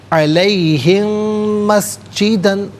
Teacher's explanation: میم ساکن ہے، اس سے مسجدہ کی میم کے ساتھ ملا کر میم کی آواز کو غننے کے ساتھ ادا کریں گے